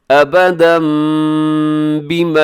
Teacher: یہاں ابداً پہ تنوین ہے اور تنوین کے بعد با ہے، تو یہاں پر اقلاب ہوگا، یعنی جو تنوین ہے اس کو ہم میم کے ساتھ بدل دیں گے